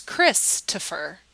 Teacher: the downbeat the emphasis is on Chris